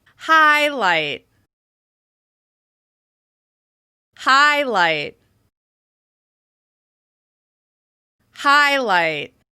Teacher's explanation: Don't forget, your goal is to relax on that second syllable, to really focus attention on the first syllable.